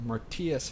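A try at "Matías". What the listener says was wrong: No, you said Martias.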